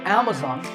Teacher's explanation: When you say it correctly, the first syllable is a, and the stress is on this first syllable. So Amazon is correct.